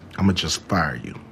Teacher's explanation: Dans ce cas là, going to va être réduit à juste a.